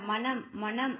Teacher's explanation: நாவின் நுனி மேல்வாய் அன்னத்தின் நடுப்பகுதியை தொடுவதால் நகரம் கிடைக்கிறது. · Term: மூணு சுழி